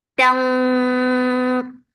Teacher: Ta is very sharp, and this ikhfa is heavy. So lift your tongue up when you are creating this ikhfa.